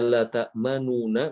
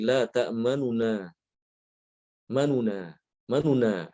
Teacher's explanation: Adapun kalau raum atau nama lain adalah ada yang menamakan ikhtilas. Raum atau ikhtilas ini adalah dengan membaca nun yang pertama itu dengan cepat, kurang dari satu harokat.